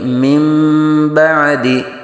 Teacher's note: नून साकिन के बाद अगर बा आ जाए तो यहाँ इकलाब होता है, यानी नून साकिन को मीम से बदलकर इख्फा करते हैं। तो यहाँ नून के ऊपर ये देखिए छोटी सी मीम पड़ी हुई है, तो यहाँ मिन बादी नहीं पढ़ेंगे बल्कि मिन बादी।